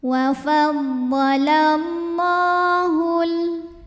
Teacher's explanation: Cara bacanya dipanjangkan lamnya 2 harokat. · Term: mad tabi'i muqaddar